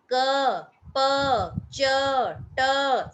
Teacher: सबके पीछे अ की साउंड आ रही है